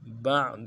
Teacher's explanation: عین میں آواز جاری رہے گی